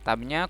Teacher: Tabnya qalqalah ya, dipantulkan. Ba-nya qalqalah karena huruf ba ketika sukun maka dia salah satu sifatnya adalah qalqalah, harus dipantulkan.